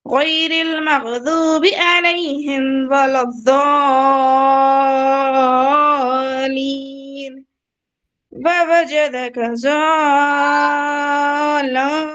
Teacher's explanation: میں مد لازم کو کھینچ رہی ہوں 6 الف کے برابر